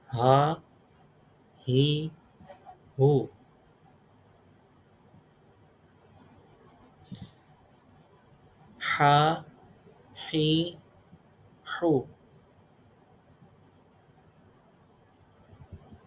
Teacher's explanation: ہا کو جو ہے وہ گلے کے مڈل تھروٹ سے ادا کرنا ہے، اور اس کی آواز بھاری نہیں ہونی چاہیے